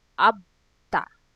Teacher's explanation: to conjugate the verb about using the suffix about will become abta ab that means reach it so there is some sort of a little push there we will omit the vowel o it will become abta